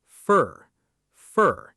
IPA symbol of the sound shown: fər